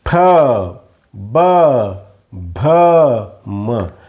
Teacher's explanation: बघा ओठांची चुंबळ करावी लागते उ ओठांची चुंबळ करावी लागते प ओठांवर ओठ दाबून फेकले जातात हवा फेकली जाते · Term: ओष्य वर्ण